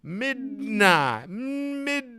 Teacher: you go to that D you got the voice going then you're just gonna push it out the nose